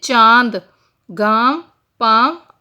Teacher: इनका उच्चारण नाक और गले दोनों से होता है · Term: अनुनासिक